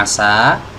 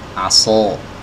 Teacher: itu jelas sangat-sangat berbeda ya padahal cuma merubah sifat loh ini Sin dengan Shad ini kan makhrajnya sama ya cuma sifatnya berbeda ya yang satu tebal yang satu tipis